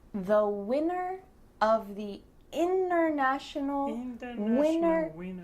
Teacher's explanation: see if you can hear my throat stopping the T in the middle of the word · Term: glottal T